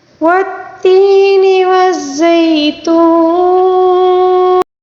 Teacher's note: واو مدہ کو ہم 3 الف کے برابر نون ساکن کی وجہ سے لمبا کریں گے، یعنی ہم اس کو 3 الف کے برابر کھینچ کر پڑھیں گے، ٹھیک ہے، واو مدہ کو۔